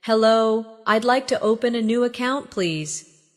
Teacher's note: Notice the stress on open and account so the purpose is clear.